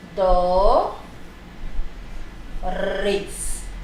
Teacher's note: Lembrando que o E no final tem som de I